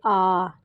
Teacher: जिन स्वरों के उच्चारण में मुख द्वार जो है वो पूरा खुलता है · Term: विवृत